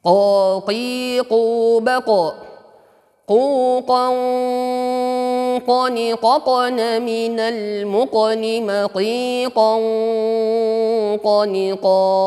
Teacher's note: Qa ini juga sifat isti'la. Jadi jangan juga kita monyongkan bibir ketika harokatnya fathah qa, ya. Tepat di pangkal lidah. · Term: huruf qa